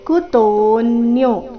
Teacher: ಕುತೋನ್ಯೋ ತೋ ದೀರ್ಘ ಕೊನೆಗೆ ಯೋ ಸಹ ದೀರ್ಘ